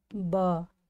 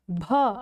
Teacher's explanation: ब कम वायु निकल रही है, भ अधिक वायु निकल रही है